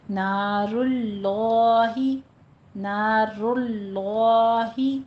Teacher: ہے، کھڑی زبر ہے، اس کو ہم پر پڑھیں گے، نارل، پہلا لام باریک تھا، دوسرے لام کو پر پڑھیں گے